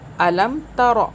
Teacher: را کو نہیں کھینچا، دیکھیں اس کے آگے الف واو یا کوئی چیز نہیں ہے۔ یہ بتانے کے لیے آپ کو تاکہ یاد رہے، میں الف واو یا تینوں کو بولتی ہوں۔